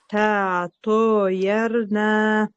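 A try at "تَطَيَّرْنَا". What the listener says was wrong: Бул жерде янын таштитин билдириңиз жакшылап. Та тойерна.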